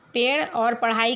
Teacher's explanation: उच्छिप्त व्यंजन कहलाते हैं, क्योंकि इनके उच्चारण में जीभ पीछे की ओर मुड़कर झटके के साथ सामने गिरती है।